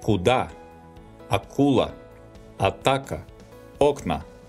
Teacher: This letter, called K, specifies the sound K, pronounced without aspiration.